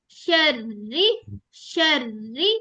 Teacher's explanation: जब कसरा के साथ बारीक रहोगी ना, तो इसमें इतनी प्रोमिनेंट आवाज नहीं आनी, फील होगी आपको वाइब्रेशन, लेकिन इतनी आवाज उस तरह नहीं आएगी, शर ऐसी नहीं आएगी।